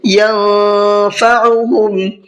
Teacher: نون ساکن کے بعد میں فا ہے، فا اخفا کے حرفوں میں سے ہے، اس لیے نون کی آواز میں اخفا کریں گے